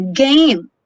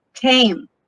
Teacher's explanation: These are both velar consonants. However, ga is voiced consonant while ka is voiceless consonant.